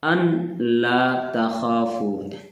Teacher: نون کو گرا دیا گیا ہے